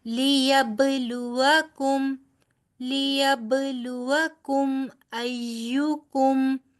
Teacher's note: أيكم قم موٹا نہیں ادا کرنا. یہ دونوں کاف جو ہیں، ڈنڈے والا کاف جس کو ہم بولتے ہیں، یہ دونوں باریک ادا ہوں گے